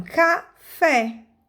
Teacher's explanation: fé é a sílaba tônica. Cá é a sílaba átona.